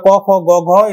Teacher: সেগুলো ক, খ, গ, ঘ এটা কণ্ঠেতে উচ্চারিত হয়